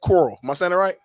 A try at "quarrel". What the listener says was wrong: Yeah, add like a W in there. Don't say coral like coral.